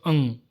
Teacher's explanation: अनुस्वार इसका उच्चारण केवल नाक से होता है